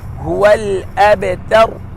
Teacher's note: را ساکن سے پہلے زبر ہے، تو ہم یہاں را کو فل ماؤتھ کریں گے